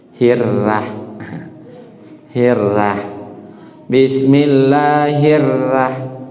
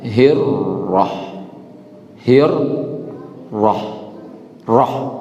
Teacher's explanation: kesalahan ketiga ra ini dia ini tebal. Dibaca orang tipis.